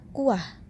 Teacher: kata kuah juga akan menghasilkan bunyi W yang tidak nyata